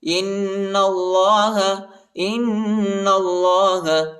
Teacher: حمزہ کو نون کے ساتھ ملائیں گے اور غنہ کریں گے اور نون کو لام کے ساتھ ملائیں گے اور اللہ کے نام کو پر پڑھیں گے، پر پڑھیں گے